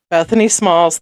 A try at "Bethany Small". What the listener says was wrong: Nope. Small. Singular. Not plural. Singular. Small. Yeah, no S at the end.